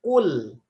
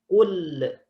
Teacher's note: Ujung lidah bertemu dengan langit-langit depan. Habis ditaruh kul, jangan dilepas.